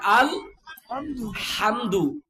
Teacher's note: হলকের মধ্যখান থেকে হায়ের উচ্চারণ হবে আল হামদু